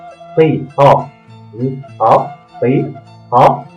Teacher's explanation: Intinya ti, to, itu ada di tengah-tengah tenggorokan. Ti, to, ini to, ti, to, ini kaf, kaf ringan.